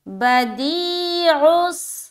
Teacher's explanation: تو عین سین پیش، غص، غص، عین کو بھی مخرج سے ادا کرنا ہے اور سین میں ملاتے ہوئے جیسے ہی سین میں عین ملے گا سیٹی کی آواز ظاہر ہوگی